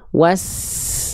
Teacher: huruf sin itu punya sifat namanya sofir atau berdesis